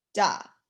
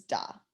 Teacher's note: To me, it sounds like I'm saying D, but apparently it's a T, it's an IPA, it's a T. T's in here are T's with aspiration.